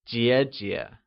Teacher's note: is pronounced using the falling Rising tone · It is pronounced using the highlevel tone